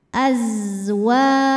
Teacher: Ayyubdilahu za itu nggak punya pantulan, bukan huruf qalqalah, jadi jangan dipantulin. Suaranya mengalir rokhawah dan punya ciri khas namanya shofir, ada desis seperti suara lebah.